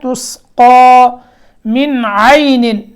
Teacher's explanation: نون کے اندر اظہار ہے، یہاں اخفا نہیں کرنا کیونکہ اس کے بعد عین جو ہے وہ حروف حلقی میں سے ہے